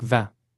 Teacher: The in needs a more nasal sound, like vingt.